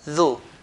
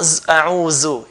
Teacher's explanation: we pronounce it from the tip of the tongue, touching the front, bottom of the front two teeth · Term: dhal